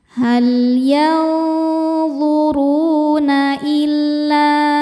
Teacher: Ru madnya ini adalah mad tabi'i zahiri karena ada waw sukun sebelumnya dhammah. Dibacanya panjang 2 harokat. · Mad tabi'inya alif didahului fathah pada kata illa, hamzahnya a pada kata an. Maka lamnya panjang, boleh 4 boleh 5 harokat. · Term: mad jaiz munfasil